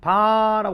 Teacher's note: 비읍을 소리 낼 때 막았다가 반드시 붙였다가 탁 터트리면서 나는 소리예요. 그래서 비읍 같은 경우는 파열음이라고 해요.